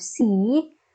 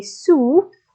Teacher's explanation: so we have C so our tongue is in front and then we say soup our tongue is in the back